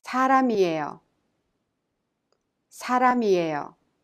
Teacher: The final consonant M in 람 of 사람 is combined with E in 이에요 and thus is pronounced 사람이에요.